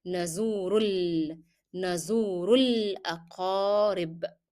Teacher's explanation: you are going to drop the pronunciation of Alif. So you go from Dhamma to Lam.